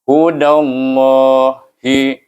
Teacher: Oleh kerana dal ini baris di atas, maka kita kena baca dia lam ini dengan tebal. Dan kita guna hukum idgham syamsi, masukkan dal kepada huruf lam di sana.